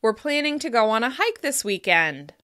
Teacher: we use falling intonation at the end of declarative statements · The fall in pitch at the end of the sentence, signals that I'm done talking.